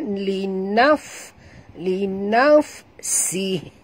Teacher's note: Ketap gigi atas ke bibir bawah. Keluar angin. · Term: huruf fa